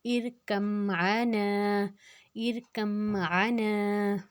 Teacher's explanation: نا کی حرکت کو ہم نے 2 حرکت لمبا کیا کیونکہ الف مدہ کی حرکت ہے. نون کے اوپر زبر آگے الف الف مدہ.